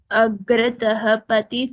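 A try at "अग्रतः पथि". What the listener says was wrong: Fourth pada, you should join the first two words. Agrataf pathi. Visarga should not be heard. Agrataf pathi.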